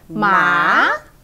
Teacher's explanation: from low to high